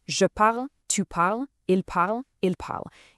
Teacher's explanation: four out of these six forms sound absolutely identical when spoken out loud. You just say the root word parle.